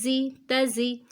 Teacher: زا میں خیال رکھیں سیٹی آنی چاہیے، سختی ہونی چاہیے